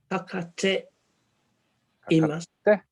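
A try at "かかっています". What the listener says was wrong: Imasu, yeah, so it's double T though. We just remember to make sure that we hit our double consonants properly. Kakate imasu.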